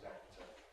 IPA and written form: ˈæk̚tə (actor)